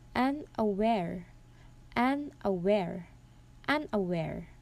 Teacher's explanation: in this word the stress is in the third syllable and the first two syllable is the unstressed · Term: anapest